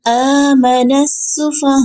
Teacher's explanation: وقف کریں گے یہاں پہ تو تھوڑا سا جھٹکا لگے گا، حمزہ ساکن ہو تو چھوٹا سا جھٹکا لگتا ہے